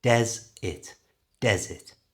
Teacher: to say desert naturally change the e r to an i sound